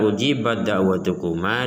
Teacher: huruf ta dimasukkan kepada huruf dal secara keseluruhan sehingga tidak bisa dibaca ujibat da'watukuma, tapi harus dibaca ujibat da'watukuma, dimasukkan secara keseluruhan kepada huruf dal. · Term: idgham kamil